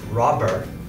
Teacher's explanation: the sound must still be voiced so that when we say words like robber, we can still hear that it's a B sound.